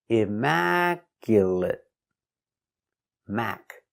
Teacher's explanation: four syllables the stress is on the second syllable Immaculate Mac stress is on Mac Immaculate Immaculate completely clean Immaculate · 4 syllables. The stress is on the second syllable. Immaculate.